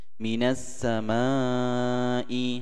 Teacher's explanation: ini masih satu kata, ada matabi'i bertemu dengan hamzah, disebut dengan mad wajib mutasil, 4 harokat panjangnya